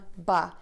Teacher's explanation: To do this, your lips are going to open and your voice box is on and moving. Move to relaxed lips for that sound. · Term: B sound